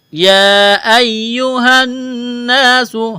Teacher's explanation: یا ایہا الناس، ہا کو نون کے ساتھ ملانا ہے۔ چشمے والی ہا ہے، منہ سے ہوا نکالنے کی طرح اس کو پڑھا جائے گا۔ نون مشدد ہے، آواز ناک میں چھپائیں گے، غنہ کریں گے۔